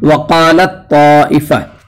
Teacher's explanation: اس میں جو ہے تا کا طا میں ادغام ہو رہا ہے اور تا کا مخرج آپ جانتے ہیں کہ ایک گنا جاتا ہے۔ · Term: ادغام متجانسین